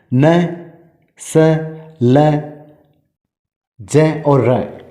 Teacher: अगर बात की जाए हिंदी की जननी संस्कृत भाषा की, तो संस्कृत भाषा में न, दंत्य स और ल वर्ण का उच्चारण स्थान दंत होने के कारण ये दंत्य माने जाते थे। लेकिन हिंदी में ये व्यंजन ऊपर के दांतों से थोड़ा ऊपर यानी मसूड़ों के साथ जीभ के स्पर्श से बोले जाते हैं, इसलिए इन्हें वर्तस्य व्यंजन कहा जाता है।